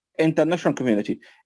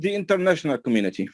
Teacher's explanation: بنتعلم الصح ان كلمة ذا لما يجي بعدها vowel sound ننطقها ذي